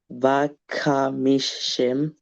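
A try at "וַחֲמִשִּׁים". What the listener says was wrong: Yeah, this is Vacha Mishim, okay? Again, try to do it with your throat.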